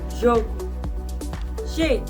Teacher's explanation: Letter J, just like letter G, sounds like ZH, as in the word measure.